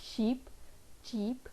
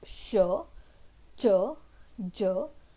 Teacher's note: the tip of the tongue is touching the teeth ridge and the front of the tongue is touching the hard palate